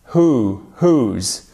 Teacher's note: on ne prononce pas le W en fait